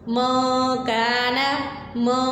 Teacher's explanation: نون ساکن تنوین کے بعد اگر حروف اخفاء یعنی اظہار کے علاوہ کوئی حروف حلقی کے علاوہ کوئی حرف آتا ہے تو وہاں پر اخفاء ہوگا، یعنی نون کی آواز کو چھپایا جائے گا